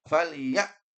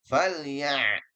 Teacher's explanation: harus mengalir sedikit. Jangan sampai ditahan. Kalau ditahan menjadi hamzah.